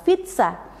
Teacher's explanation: Contoh dalam bahasa Italia adalah pizza, di mana bunyi Z adalah bunyi geminat. Ini mengindikasi bahwa Z yang diucapkan lebih lama dan kuat dibandingkan dengan Z yang biasa.